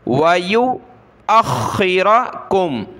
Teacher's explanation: حمزہ خا زبر اخ, خا زیر خی, اخی, را زبر را, اخیرا. خا کو گلے سے نکالیں گے, سختی کے ساتھ پڑھیں گے